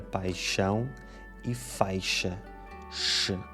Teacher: um fenómeno fonético em que certos sons mudam o seu ponto de articulação para o palato duro, também conhecido como céu da boca. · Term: palatalizações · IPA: [ʃ]